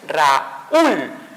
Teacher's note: El sonido fuerte se dio en la U, por lógica lleva una tilde y se separa esa unión de vocales. Por lo tanto, sí, tenemos aquí una palabra bisílaba.